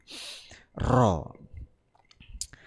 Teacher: ujung lidah agak ke dalam mengenai gusi gigi depan menjadi makhrajnya huruf ro